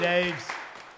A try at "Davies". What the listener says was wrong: It's pronounced Davies. There's an E. There's an E in there.